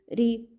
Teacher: він був м'який тому що після нього стояв звук і який завжди пом'якшує попередній приголосний